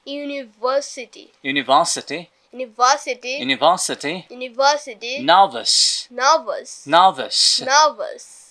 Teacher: তাহলে র এর পরে যদি কনসোনেন্ট সাউন্ড আসে তাহলে র এর উচ্চারণটা হবে না, বাট র এর পরে যদি ভাওয়েল সাউন্ড আসে তাহলে র এর উচ্চারণটা হবে।